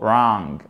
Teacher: Le W ne se prononce pas ici, on a un A. Une voyelle longue entre le A et le O